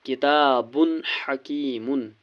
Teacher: ہا حرف حلقی ہے اس لیے نون کو ظاہر کر کے پڑھنا ہے، نون کی آواز کو ظاہر کر کے پڑھنا ہے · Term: اظہار